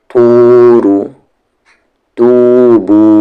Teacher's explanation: यहाँ पर ता को भी खींचेंगे और बा को भी खींचेंगे क्योंकि इन दोनों के साथ वाव है